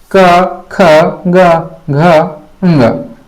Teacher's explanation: गले कंठ से उच्चारित होते हैं